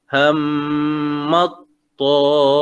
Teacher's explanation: Ham tu kita dengungkan dua harakat. Ham, kemudian pada huruf ta.